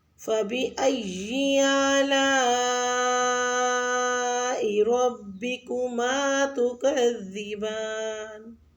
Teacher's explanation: فبأي آلاء میں حمزہ زبر جو ہے یعنی کہ جو مد ہے الف کی، اس کو 5 سے 6 حرکات لمبا کھینچیں